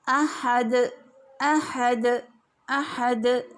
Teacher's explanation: دال میں بھی سختی پائی جاتی ہے اور قوت بھی پائی جاتی ہے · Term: شدیدہ